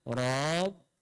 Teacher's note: Rabbana ra tebal. Masuk ke dalam ba. Rapatkan betul-betul. Jangan panjang.